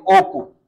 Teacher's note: তখন অটা অ এর মত হবে। অ যদি ও এর মত হয় আমরা বলব সংবৃত।